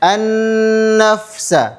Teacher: Kalau nun bertasydid maka hukumnya adalah gun gunah dan panjangnya dua harakat.